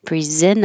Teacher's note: I'm not going to say the T. I'm going to skip it.